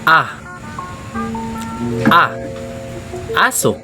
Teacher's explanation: Sa letrang A naman ay pasentral ang bibig. Pagitna ang dila at hindi bilugan ng mga labi kaya ito ay hindi pabilog.